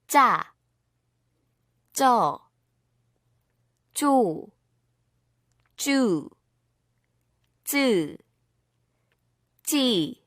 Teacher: Doubling 지읒 makes 쌍지읒. 쌍지읒 is pronounced like 지읒, but with more stress on the vocal cords. It also has a higher tone.